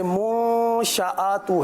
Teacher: یہاں پر غنہ بھی کرنا ہے، پیش کے لیے ہونٹوں کو گول بھی کرنا ہے